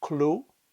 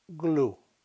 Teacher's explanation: The fourth pair are the unvoiced k and the voiced g, as in clue.